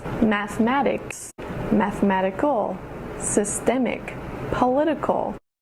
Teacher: It's like rule number 2, isn't it? The emphasis goes on the syllable right before the ick or ickle ending.